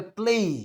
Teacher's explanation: ए से शुरू हुआ ई पर खत्म हुआ उसको आप कहते हैं डिफंग यानी जिसम दो साउंड्स का मजमुआ